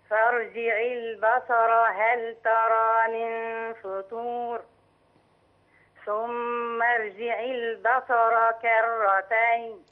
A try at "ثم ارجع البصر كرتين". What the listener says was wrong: ثم ارجع تفخيم الراء. تفخيم الراء. كرتين